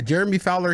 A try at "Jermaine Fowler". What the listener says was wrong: I'm gonna need you to actually pronounce his name correctly. You're saying Jeremy Fowler.